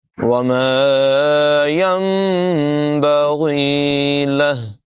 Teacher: نون ساکن کے بعد با ہے، اقلاب ہوگا، یعنی نون ساکن کو میم سے بدل کر پڑھیں گے۔ یہاں پر نون ساکن میم سے بدل کر پڑھا جائے گا، نون کو نہیں پڑھیں گے بلکہ یہ جو چھوٹا سا میم نظر آ رہا ہے اس کو پڑھا جائے گا۔